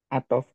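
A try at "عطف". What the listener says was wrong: ahsanta barakallahu fiik.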